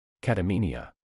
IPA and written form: ˌkæt əˈmi ni ə (Catamenia)